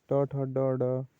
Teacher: हिंदी की मूर्धन्य ध्वनियाँ है